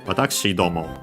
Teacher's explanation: the accent when adding domo is always on the do